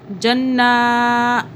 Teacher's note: جنہ آپ نے کھینچ دیا، کھینچنا نہیں ہے، بس ناک میں ہولڈ کر لینا، سٹاپ کر دینا ہے ناک میں ہولڈ کر کے، جنہ غنہ کرنا 2 سیکنڈ کا